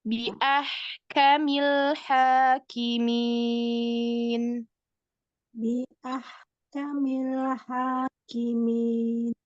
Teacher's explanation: Nah, huruf kaf kasih hamzah sedikit.